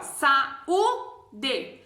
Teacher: Esse U é a sílaba forte, mas é um hiato porque só tem um U que fica ali, ó.